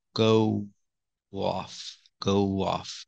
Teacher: We have two vowels here. When you link them, you hear the W sound, w-w, like this.